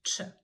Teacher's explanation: your tongue is supposed to push your palate while you're saying the letter Ch, and it's a very explosive sound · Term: the harder sound